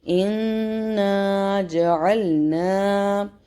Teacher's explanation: نون مشدد اور میم مشدد پہ nasal sound ہوگا. ساتھ میں الف ہے، الف فالو کر رہا ہے اس فتحہ کو، تو یہاں پہ اس کی ٹائمنگ بھی ہوگی 2 سیکنڈ.